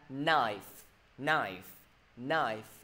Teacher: K với N đứng bên cạnh nhau luôn luôn phát âm là N.